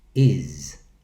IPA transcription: iz